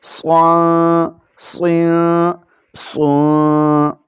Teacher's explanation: یہاں صاد کو ہم نے موٹا پڑھنا ہے کیونکہ یہ حروف مستعلیہ میں سے ہے